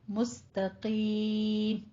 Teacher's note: آگے مستقیم میں آپ نے تا کو باریک رکھنا ہے، مستقیم نہیں کہنا.